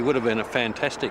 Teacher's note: when unstressed words begin with the letter H the H sound is often dropped in Connected speech